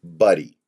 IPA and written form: ˈbʌdi (Buddy)